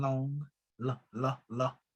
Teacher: this letter L, you know, as voice lateral as in long